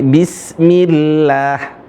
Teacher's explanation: Kalau seperti bismillah tipis karena sebelumnya kasrah